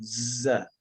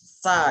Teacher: Pita suara mengeluarkan z. Kalau pakai nafas atau pakai udara, yang keluar bukan z lagi, sa jadinya. Sa. Karena mereka satu makhraj ini. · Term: jahar